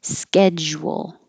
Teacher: The SCH is a SK, almost always ske. Schedule. Round your lips a lot so it makes a wool.